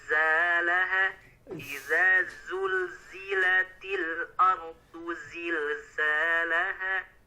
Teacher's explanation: Nah, pertama tadi di huruf zai ya, di ayat 1, idza zulzila aradu zilzalaha, tadi tertukar menjadi huruf jim, kurang ada desisan. Nah, lebih didesiskan lagi Pak, seperti huruf z.